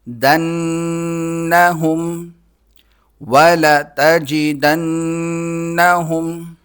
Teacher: نون پر تشدید ہوتی ہے تو اس پر غنہ ہوتا ہے، ناک میں آواز پیدا کی جاتی ہے۔ دنہم وَلَتَجِدَنَّهُمْ، حمزہ کو حا کے ساتھ ملائیں گے، حا کو حلق سے نکالنا ہے۔